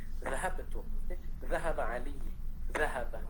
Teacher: Orang Arab akan menekankan sedikit tekanan suara pada za.